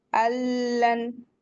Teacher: नून को नहीं पढ़ेंगे, यहाँ डायरेक्ट मिला देंगे। अल्लन, यहाँ पे कैसे पढ़ेंगे? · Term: इदगाम बिला गुन्ना